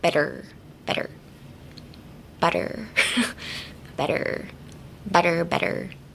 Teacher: You can say better, but like seems a bit off. So, don't uh emphasize the t. Just kind of flow it through like better.